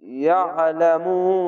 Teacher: আইনটিকে মোটা করে গলা চিপে ইয়ালামুন।